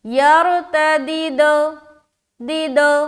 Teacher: दीदे ये जो साउंड नीचे की तरफ जाती है वो गलत कलकला होता है। यरतदिद दो दो ऊपर की जानिब खुले।